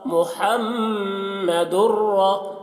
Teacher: اب یہاں پر دیکھیے میم میں ہم غنہ کر رہے ہیں کیونکہ میم مشدد ہے، را کو پور پڑھ رہے ہیں کیونکہ را مشددہ کے اوپر زبر ہے